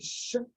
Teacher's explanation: es una sh, un poco más larga